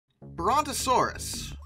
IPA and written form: ˌbrɒntəˈsɔːrəs (Brontosaurus)